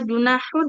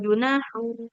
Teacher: Dia tanwin. Baca nun sukunnya dengan sempurna ya, seperti itu.